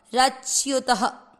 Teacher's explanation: त में अ मिक्स करेंगे, रच्युत। त में अ की मात्रा तो विसर्ग को पढ़ेंगे ह